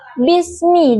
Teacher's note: Kata bismi huruf ba yang makhrajnya itu di dua bibir yang saling bertemu. Huruf sin makhrajnya itu di ujung lidah yang menempel pada gigi seri bawah. Kesalahan yang sering terjadi seperti pengucapan ba yang terlalu lemah, tidak rapat bibir sehingga terdengar seperti bismi.